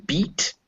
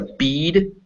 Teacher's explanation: So for instance, when I say a bead and then beat, you notice that E is shorter in beat than in bead.